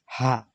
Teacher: হা মানে ভিতর থেকে কন্ঠনালীর শেষ সীমানা থেকে উচ্চারিত হবে